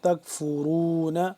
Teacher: را واو پہ شروع، را کو پر کر کے پڑھیں گے